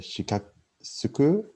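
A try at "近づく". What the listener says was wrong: Not Shaka Khan. Chikazuku. Yeah, so be careful to not soften this into shi. Make it chi.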